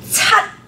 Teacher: It ends really abruptly with the T. And the way for you to pronounce it correctly is to first say the T. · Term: tone number 7